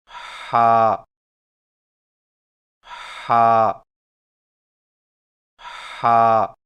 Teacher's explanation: ہا کی ادائیگی میں زبان کی جڑ کو حلق کی طرف مضبوطی سے دباتے ہوئے باریک اور رگڑ کھاتی سانس میں پڑھیں